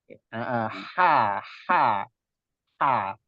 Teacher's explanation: H dan ain itu letaknya di tenggorokan tengah.